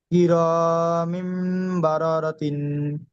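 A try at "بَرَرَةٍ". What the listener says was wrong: মাশাল্লাহ, সুন্দর।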